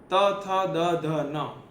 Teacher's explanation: ત થ દ ધ ન એ બધા જોવો તમે દાંત માંથી નીકળે છે એ બધા દંત્ય છે